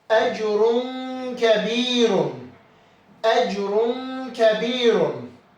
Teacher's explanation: ranın üzərindəki tənvin, dammətən, un səsi açıq-aşkar oxunmadı. Tənvindın səsi gizlədilərək burun boşluğundan oxundu. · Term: ixfa